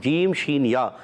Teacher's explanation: اخفا کی معنی ہے چھپانا، نون کو چھپا کر ادا کریں گے، ایک الف کا غنہ کریں گے۔ شین کا مخرج ہے زبان کا درمیان اور تالو کا درمیان